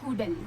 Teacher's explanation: Cara dibaca tanpa dengung bunyi tanwin tu hilang. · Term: idgham bila gunnah